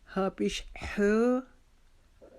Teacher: ہا ہمارے حلق کے درمیانی حصے سے ادا ہوگا جہاں سے ہم اپنا سانس ہاتھ پر اسمیل کرنے کے لیے اگر نکالیں تو جیسی آواز آئے گی ہے، تو یہ ہماری ہے کی آواز ہے۔